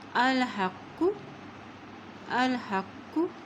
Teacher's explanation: ہا کی زبر کو قاف کے ساتھ ملائیں گے اور یہ قاف موٹا ادا کیا جاتا ہے، اس قاف کے اوپر شد بھی ہے